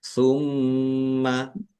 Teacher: mimnya ada tasdidnya, dibaca gunnah atau mendengung, ditahan biar tampak mendengung.